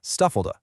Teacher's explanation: And stuff like that can get so squashed together, it almost sounds like one word